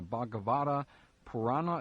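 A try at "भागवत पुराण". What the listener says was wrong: It's easiest to drop the A at the end. Because you can either pronounce it or not, but Bhagavata Purana. Would be the easiest.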